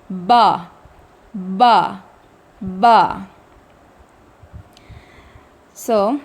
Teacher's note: با کا اخراج ہمارے دونوں ہونٹوں کے تر حصوں کے ملنے سے ہوتا ہے. دونوں ہونٹوں کو ملا کر تھوڑی دیر وائبریشن ہوگی اور پھر دونوں تر حصے جب ایک دوسرے سے جدا ہوں گے تو با ادا ہوگا. · دونوں ہونٹوں کو ملا کر تھوڑی دیر وائبریشن ہوگی اور پھر دونوں تر حصے جب ایک دوسرے سے جدا ہوں گے تو با ادا ہوگا. با کی ادائیگی میں آپ کے ہونٹوں سے ایئر فلو بالکل نہیں آنا چاہیے اور مجہول بھی آپ نے با کو ادا بالکل نہیں کرنا.